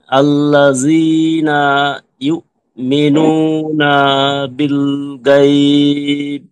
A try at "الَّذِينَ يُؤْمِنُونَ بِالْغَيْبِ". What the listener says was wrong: হ্যাঁ, ইউমিনুনা একটু টান হয়ে গেল। এ না বলে থামা যাবে না, না সাথে সাথে বি বলে ফেললে তখন টানটা হতে পারবে না। খেয়াল করেন আমি কিভাবে পড়ি, সবাই পড়বেন প্লাস খেয়াল করবেন। আল্লাযীনা ইউমিনুনা বিল গায়ব।